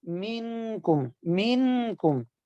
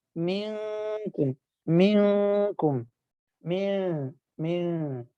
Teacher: لیکن جب اخفاء کرنا ہے تو سختی سے نہیں لگانا بلکہ نرمی سے ہلکا سا لگانا ہے. ٹھیک ہے، زبان کے کنارے کو دانتوں کی جڑ کے ساتھ ہلکا سا نرمی کے ساتھ لگا کر پھر نون کی آواز کو، ٹھیک ہے، ناک میں چھپانا ہے اور مشدد نہیں کرنا